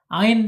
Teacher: Ain ada di tengah-tengah tenggorokan ya